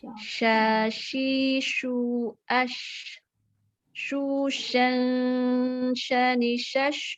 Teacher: yang hurufnya syah ini kan benar-benar nanti udara menyebar di mulut ya.